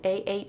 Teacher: the French ah is more open than the English a of sat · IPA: /a/